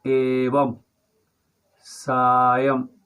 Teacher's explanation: शब्द के अंतिम अक्षर पर अनुस्वार लगाने पर इसकी आवाज आधे माँ के समान हो जाती है या होती है।